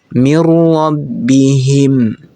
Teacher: Jadi ingat lagi teman-teman bahwa hukum bacaan idgham bila gunnah itu dimasukkan dan tidak berdengung. Artinya nun sukunnya ini tidak dibaca tetapi langsung dimasukkan ke huruf ra.